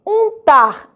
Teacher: agora o U está nasalizado, ele aparece com a letra N logo após